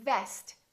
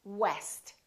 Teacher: say vest make sure that it doesn't sound like West so V is just a lower lip touching the the upper teeth vest and W West we round our lips and the lower lip doesn't touch anywhere